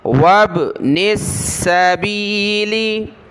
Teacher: نون کو سین کے ساتھ ملائیں گے